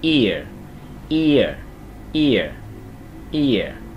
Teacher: Mình đọc là y ơ đúng không? Đọc dính lại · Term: nguyên âm đôi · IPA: /ɪə/